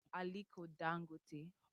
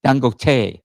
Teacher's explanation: So the pronunciation, the stress is on that third syllable.